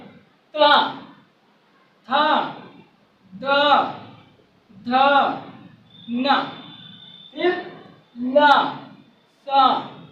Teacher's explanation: तो जीभ हमारी ऊपर के दांत में जाकर टच करती है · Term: दंत वर्ण